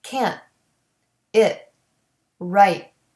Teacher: the stopped te doesn't have the puff of air